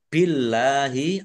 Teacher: Allahnya dibaca tipis karena harakat di depannya kasrh